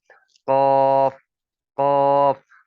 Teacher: कौफ को अदा करने के लिए होंठ गोल नहीं करने, इस चीज का खास ख्याल रखना है आपने।